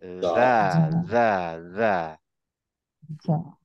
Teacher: গিজগিজ আওয়াজ হবে এবং তখন মনে হবে আমার গলায় যদি হাত দেই দেখবা একটা কেমন একটা ভাইব্রেশন হচ্ছে